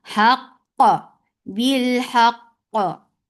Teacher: First qaf will get shidda, but there should not be any gap in the pronunciation of the next qaf, which has qalqala. At the end, last qaf will get sifa of qalqala, and qalqala should be very clearly done.